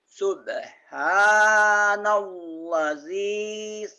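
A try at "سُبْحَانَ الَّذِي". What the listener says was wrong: Kok subhanallah? Subhanallah. Jangan ada Allahnya.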